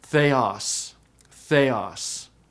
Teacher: The second accent is a grave, which means originally the pitch went down.